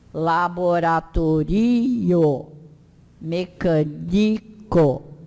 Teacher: As palavras são todas paroxítonas, ou seja, a sílaba tônica é sempre a penúltima.